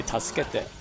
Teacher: most people will say it fast enough that you don't really hear the su.